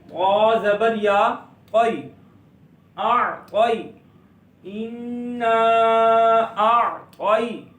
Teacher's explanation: تو ہم پڑھ رہے تھے کہ یا ساکن اور اس سے پہلے زبر ہے. جب یا ساکن سے پہلے زبر آ جائے گی تو وہاں پر یا لین ہوتا ہے، اس کو لمبا نہیں کریں گے